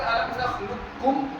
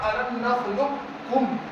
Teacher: الم نخلقکم پورا ادغام تام بھی کر سکتے ہیں، اور الم نخلقکم ادغام ناقص قاف کے ساتھ بھی پڑھ سکتے ہیں. دونوں طرح ادغام ناقص اور ادغام تام بھی کر سکتے ہیں، یعنی اس کی بھی تھوڑی سی قاف کی بھی بو آ سکتی ہے.